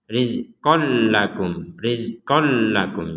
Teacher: Ini tasydid untuk memperkuat kita membacanya rizqol lakum. Jadi tidak ada dengungan sama sekali.